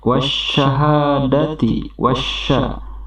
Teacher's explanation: Ini merupakan rekannya, yakni alif lam syamsiyah, di mana alif lam ini bertemu dengan shin, maka pembacaan lamnya pun tidak terasa